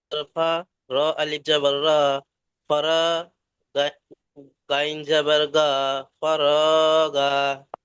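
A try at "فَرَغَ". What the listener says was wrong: না, গইন জাবার গ। দেখুন, বানান করার সময় আপনার কোনটা কত টান সেটা দেখতে হবে। আপনি বলছেন ফা জাবার ফা, র আলিফ জাবার র, ফা র, গইন জাবার গ, ফারগ।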